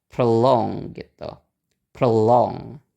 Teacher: Oke, berarti sama yang ada o-nya itu nggak di stress, berarti stressnya ada di suku kata yang kedua, stressnya ada di longnya.